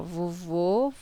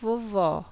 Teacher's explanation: o acento circunflexo foi usado nos sons fechados e o acento agudo foi usado nos sons abertos